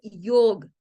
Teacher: que sonara yoga Y esa yog no tiene una a así en sánscrito tiene una a corta por eso es que realmente la palabra es yog